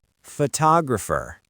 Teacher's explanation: Because the stress moved to the second syllable, that second O suddenly wakes up. It becomes a strong, clear vowel, tog. But look what happens to the first O.